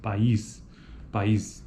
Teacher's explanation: Então, é uma sequência de vogais. Durante a articulação de duas vogais em sequência, como na palavra país, cada vogal ocorre em uma sílaba distinta e cada vogal apresenta qualidade vocálica específica.